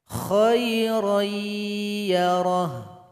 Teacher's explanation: ada tanwin berjumpa dengan ya maka mesti dibaca Idgham Bighunnah tanwin dilebur kepada huruf ya dan didengungkan